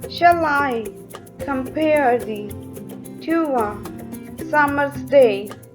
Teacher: here is the iambic pattern of stressed and unstressed syllable repeated five times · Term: iambic pentameter